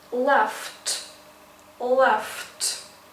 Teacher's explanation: So laugh finishes with f, f sound. F is voiceless, so we need to pronounce t, because t is also a voiceless consonant. So we would say left, left.